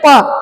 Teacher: ओष्ठ उच्चारण स्थान है इनका। जैसे प बोलते हैं तो हमारे दोनों होठ मिल जाते हैं।